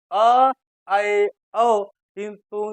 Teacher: अ, ऐ, औ तीनों के उच्चारण में हमारा मुख द्वार आधा खुलता है। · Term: अर्धविवृत स्वर